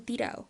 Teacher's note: Los andaluces pronuncian la doble L como Y, y sus des suelen verse absorbidos por las vocales adyacentes